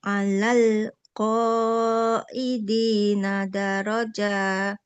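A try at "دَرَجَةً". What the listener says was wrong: Darajah. Jangan panjang jimnya. Dia harokat fathah tanpa ada alif di depannya, maka tidak boleh dipanjangkan. Darajah qaidina darajah. Darajah. Darajah.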